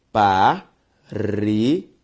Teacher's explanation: Perceba que a sílaba tônica de parede é o re. Uma palavra paroxítona.